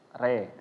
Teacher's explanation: dibacanya huruf ro di sini ditulis secara tarkik ya, tipis re. Jangan dibaca tebel.